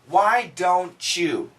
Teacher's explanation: And with this T and the Y, we get the CH sound.